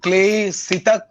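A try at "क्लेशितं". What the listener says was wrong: খুব ভালো, খালি ক্লেশিত হবে তালবস্য। একদম শুরুতে মায়া, হ্যাঁ স তালবস্য। ক্লেশিত।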